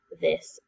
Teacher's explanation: it's got that noisy th sound that makes my tongue tickle and I say it this okay go ahead and write your